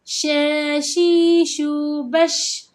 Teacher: Iaitu tengah lidah kita ini kan bahagian tengah lidah ini dia akan rapat ke lelangit atas, iaitu huruf ya, jim dan shin.